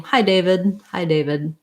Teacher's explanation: i'm not really going to release that d sound